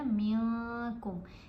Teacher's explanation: یہاں پر بھی ہم نے اخفا کیا کیونکہ نون ساکن کے بعد کیف ہے، حروف اخفا میں سے ہے کیف، تو ہم نے نون کی آواز کو ناک میں چھپا کر پڑھا